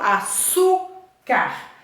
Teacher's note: Qual que é a sílaba tônica? Su, porque eu pronuncio açúcar.